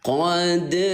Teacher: Dal sukun bacanya dengan pantul gitu ya.